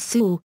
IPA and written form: suw (sul)